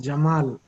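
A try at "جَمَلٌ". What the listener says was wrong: Not. It is not Jamal. There is fatha on Jim, fatha on Mim, and tanween with dhamma on Lam. So it will be Jamalun. Jamalun.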